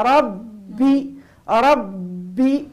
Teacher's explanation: الباه هنا ومضاعفه عندها صفه اسمها صفه الشده انحباس الصوت لابد يكون الزمن بع انحباس الصوت معناها لانها مضاعفه ربي ربي